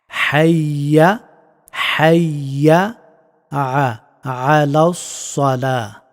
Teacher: এই হাটা গলার মধ্যস্থল থেকে উচ্চারিত হয়